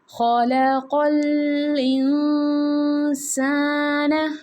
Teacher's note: خَلَقَ الْإِنسَانَ، میں نے پیچھے بھی آپ کو بتایا تھا انسان میں کہ جب نون ساکن کے بعد حروف حلقی کے جو 6 حروف ہیں عین، ہا، غین، خا اور حمزہ ہا، ان 6 کے علاوہ اگر نون ساکن کے بعد کوئی بھی حرف آ جاتا ہے تو ہم نے نون ساکن کی آواز کو ناک میں چھپا کے پڑھنی ہوتی ہے.